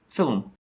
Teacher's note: has a short schwa after the l sound and before the m